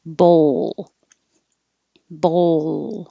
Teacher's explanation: the high enough position to touch to make the l and hold it in the l position a little longer to make the l noise